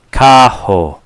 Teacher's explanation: r sounds like an H